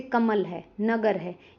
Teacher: इन शब्दों में म और ग पे ज्यादा जोर दिया जाता है। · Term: बलाघात